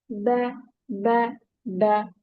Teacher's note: Ba sound comes from the moist part of the lips। Moist part, it means inner parts of the lips।